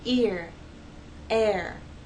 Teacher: you actually have two vowel sounds that are gliding and blending into each other to make one vow sound these words are one syllable ear